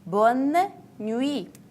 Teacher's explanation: I pay attention, there is no nasal sound.